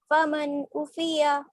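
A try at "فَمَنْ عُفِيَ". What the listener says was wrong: عین کو صاف بولیے, گلے میں زور لگا کے. فمن عفیہ.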